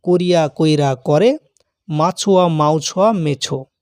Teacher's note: এর আগে উচ্চারণ করেছি এবং পূর্বের স্বরধ্বনির সঙ্গে মিলিত হয়েছে মানে রসই তার আগে যে স্বরবর্ণ রয়েছে বা স্বরধ্বনি হচ্ছে অ তার সঙ্গে মিলিত হয়েছে বা প্রভাবিত হয়েছে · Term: অভিশ্রুতি